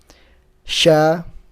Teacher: Di tempat yang sama kayak jim, tapi dia agak jauh sedikit dari langit-langit. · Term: shin